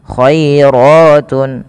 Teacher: lembutkan dalam pelafalan huruf ya yang di mana didahului dengan fathah karena dia ada bacaan lin